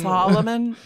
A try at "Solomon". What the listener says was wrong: It sounds like you're saying sullen man, which Solomon is not.